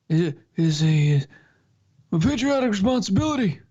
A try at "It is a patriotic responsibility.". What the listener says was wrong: No, you're putting too much push behind it. It sounds like you're trying to merge him and Bernie. remember, he's very laid back. It's very quiet.